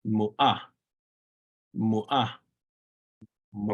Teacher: But in your mom's mom, you put the stress over the ah.